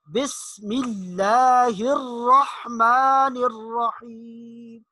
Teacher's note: سین ادا کرتے ہوئے تھوڑی سی سیٹی کی آواز ہونی چاہیے · لفظ اللہ کو موٹا نہیں کرنا، باریک پڑھنا ہے